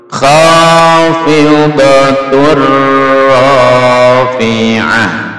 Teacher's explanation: Tun dimasukkan ke ra menjadi khafidatur.